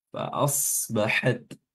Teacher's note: sotnya dibaca tebal, taknya diperhatikan hamsnya ketika dia sukun